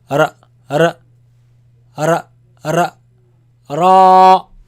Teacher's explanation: And this sound actually, it comes from the tip of the tongue touching the front palate roof.